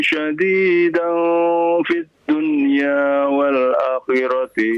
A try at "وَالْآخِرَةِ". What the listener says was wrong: والآخرة A-nya panjang.